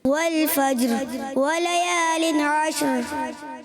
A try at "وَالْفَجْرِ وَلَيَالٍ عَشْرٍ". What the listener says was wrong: جی را کی ادائیگی جب آپ کرتے ہیں تو تکرار اصلی نہ ہو, کوئی را نہ نکلے. والفجر ولیال عشر ایسا نہ ہو. والفجر ولیال عشر. ٹھیک ہے, اس کی ادائیگی درست کرنی ہے.